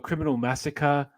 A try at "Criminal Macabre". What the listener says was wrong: Macabre. Criminal Macabre, bro. You said massacre, bro. There ain't no massacre in